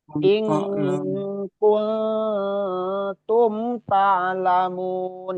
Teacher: Nah, terus mim ketemu ta itu hukumnya tadi izhar. Jadi sama sekali nggak ditahan, nggak ada runah, bukan runah, izhar.